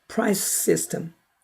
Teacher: price와 systems 두 개의 마찰음, 같은 계통의 마찰음이니까 두 번 들리지 않아요. price 하고 조금 이따 system, 그럴 때는 둘이 독립적으로 들리지만 같이 발음할 때는 price system, 약간 더 길이가 연장되는 듯한 기분 만듭니다.